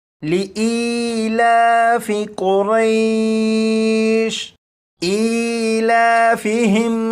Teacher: یا مدہ کو ایک الف کے برابر کھینچ کر پڑھے گا۔